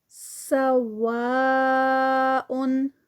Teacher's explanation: سوا پہ جو مد ہے مد متصل 4 کاؤنٹس کی